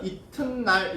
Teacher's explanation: 지금 디귿 돼 있으니까 비음화해서 이튿날 이렇게 해야 돼